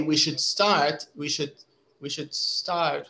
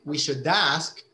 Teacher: there's a bit of a d you can still hear it it's just not very strong